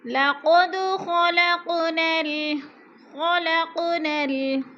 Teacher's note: लक़द ख़लक़नल, ख़लक़नल, ख़लक़ की क़ाफ़ को हिलाकर पढ़ेंगे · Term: क़ुल